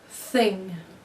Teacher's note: A sound we commonly refer to as a lisp, sometimes called an interdental lisp, is the sound that is made when the tongue comes out and sits between the upper and lower teeth. The sound that is created from the air running between the tongue and the teeth is like another sound we make, the TH sound, or th.